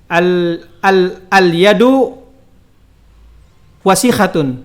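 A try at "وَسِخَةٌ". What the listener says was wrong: Bukan wasiha, wasikha.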